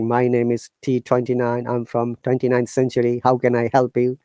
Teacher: you see it's going straight it's called monotonous it's the same tone · hello, the robotic, like my name is T29, I'm from 29th century, how can I help you? You see, it's going straight, it's called monotonous. So same tone, mono means same here.